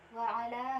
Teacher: terdapat hukum bacaan mad jaiz munfasil, dengan cara bacanya itu dibaca panjang 2, 4 atau 5 harokat